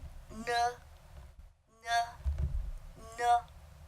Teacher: Here is the nasal sound, n, n, n. The tongue is kind of placed on that alveolar ridge to make those sounds.